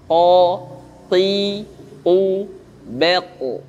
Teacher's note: Dengan pangkal lidah yang dinaikkan ke langit-langit. Suara qaf yang tebal itu dengan dinaikkan pangkal lidah ke langit-langit.